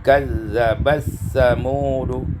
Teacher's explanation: idgham ta fi sa, diidghamkan tak pada sa menjadi kazzabat samudu